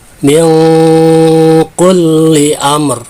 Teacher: Nah, itu disebut dengan ihfa abad, yaitu nun yang berada di ujung lidah ini jauh, ya, ke huruf ka, maka dibacanya lebih dominan dengungnya daripada samarnya